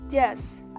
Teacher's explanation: Just is produced become just without T because the T sound is deleted